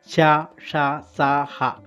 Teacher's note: ഊഷ്മാക്കളെ ഉച്ചരിക്കുമ്പോൾ ശ്വാസം അല്പം മാത്രം വിവൃതം ആകയാൽ അവയെ ഈശത് വിവൃത പ്രയത്നങ്ങൾ എന്ന് പറയുന്നു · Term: ഊഷ്മാണാം